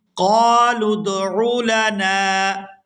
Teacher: قالوا ادع لنا ربك يبين لنا، قالوا ادع لنا، یہاں نون کے ساتھ الف مدہ ہے تو اس کو کھینچ کر ادا کریں گے